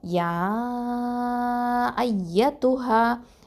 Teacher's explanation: ஏன்னா தனித்தனி வார்த்தைகளாக இருக்குது, பார்க்கும்போது சேர்ந்திருந்தாலும் இது தனித்தனி வார்த்தைகள் தான் அப்படிங்கிறதுனால அந்த சட்டத்தின் அடிப்படையில் மத்தல் ஜாயிஸ் அல் முன்ஃபசிலுங்கிற சட்டத்தின் அடிப்படையில் 4 இல்லைன்னா 5 அலிஃபு நீட்டி தான் இதை ஓதணும்